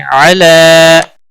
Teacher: لام کے اوپر کھڑی زبر ہے ایک الف کے برابر کھینچ کر پڑھیں گے